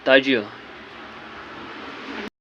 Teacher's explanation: اب جیم حرف قلقلہ ہے اور اس پہ جزم ہے تو اس پہ قلقلہ کرنا ہے